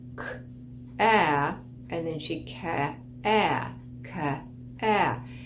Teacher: showed her that she was adding a vowel in where there shouldn't be one